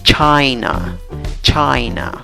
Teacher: La sílaba que lleva la fuerza de voz es la primera sílaba contando de izquierda a derecha.